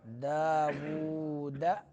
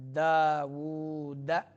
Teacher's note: سلیمان داود، واو کے اوپر الٹا پیش ہے تو کھینچنا ہے اس کو۔ داود، دال شدیدہ حروف میں سے ہے تو سختی کے ساتھ ادا کیا جائے گا یہ حرف